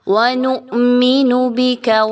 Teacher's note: حمزہ پر جب بھی ساکن کا جزم کا نشان لگایا گیا ہوتا ہے تو ہم اس کو جھٹکا دے کے پڑھتے ہیں حمزہ کو